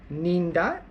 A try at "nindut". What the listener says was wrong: Yeah, I heard you saying nindat because in English it's dots. When you read this one, dots, right?